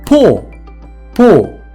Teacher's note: в цьому слові є просто звук о і немає носового звуку оу